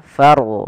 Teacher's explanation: maka rnya dibaca dengan ro tafkhim yaitu kita harus menebalkan suara rnya